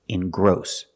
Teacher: We put the stress on the second syllable. It's not engross, it's engross.